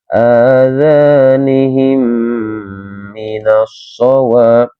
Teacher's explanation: Kita tekan bacaan ini dua harokat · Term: Idgham mimi